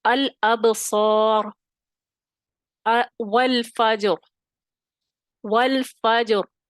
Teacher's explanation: ٹھیک ہے, اب را ساکن کیا ہم نے کیونکہ ہم نے وہاں وقف کرنا تھا, ساکن ہو گیا, اور جیم آلریڈی ساکن تھا. اب فا کے اوپر زبر تھی, تو ہم نے دیکھا کہ ہم نے پھر اس را کو موٹا پڑھنا ہے